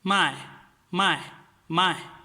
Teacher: with the fourth tone means now to sell something